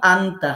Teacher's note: নুন সাকিনের উচ্চারণ অনস্বর মতো পড়তে হবে। সরাসরি অনস্বর দিয়ে আমরা বলবো না, কিন্তু অনস্বরের মতো পড়তে হবে।